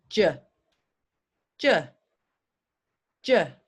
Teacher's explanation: same as CH but I have to use my voice